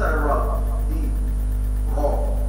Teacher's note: الراء هنا عليها فتحه تبقى مفخمه سواء كانت الرا عليها فتحه او ضمه تبقى مفخمه يبقى اخد